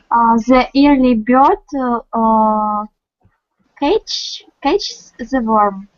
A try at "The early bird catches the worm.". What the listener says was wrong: I think that you have told it in the right way,